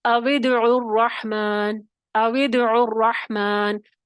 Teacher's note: واو کو کسرہ دے دیا، پہلے ساکن کو کسرہ دے دیا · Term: کسرہ کا قاعدہ